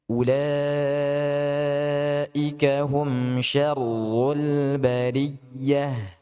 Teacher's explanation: أولئك هم شر البرية. Nah, ra di sini ditekan lagi karena dia bertasydid. Kemudian ya tasydid itu harus ditekan ya supaya tidak sama dengan ghunnah ataupun dikhawatirkan menjadi ghunnah.